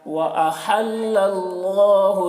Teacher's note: اللہ کلام کو پر پڑھیں گے کیونکہ اللہ کلام سے پہلے زبر ہے